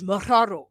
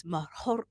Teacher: it's a light roll, but it's not a Spanish roll. Like Spanish is maharo, like that.